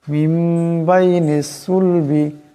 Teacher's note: এখানে নুন সাকিনের পর বা আসছে, এই নুন সাকিনকে মিম দিয়ে বদলায় পড়তে হবে, এটাকে কলব বলা হয়। মিম বাইনিস সুলবি, এখানে সাদের আওয়াজটাকে মোটা করিয়া পড়তে হবে।